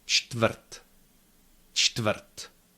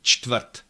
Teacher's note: each consonant is there, but it is not long. There is no quasi-schwa in between them. Čtvrt, nice and crisp.